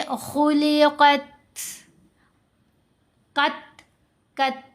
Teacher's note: ता साकिन है, ता इन हरूफ में भी शामिल है, तो हम पढ़ेंगे खुलिक़त, कत, कत की साउंड, ठीक है। कमज़ोर कर दी ता की आवाज़, ऐसी आवाज़ बन गई जैसे ता के अंदर से हा की आवाज़ गुजरी हो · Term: हम्स